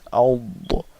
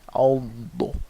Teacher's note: dad is a heavy letter, so the back of the tongue has to rise.